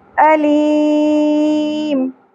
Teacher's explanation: وقف کی صورت میں میم ساکن ہو جائے گا اور سیکنڈ لاسٹ الفابیٹ ہمارے پاس یا حرف مدہ ہے، اس لیے یہاں پر مد عارض وقفی ہوگی